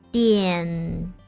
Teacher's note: front nasal in the end